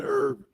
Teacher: Americans kept the original French influence pronunciation. American English herb, E-R-B, silent H is standard.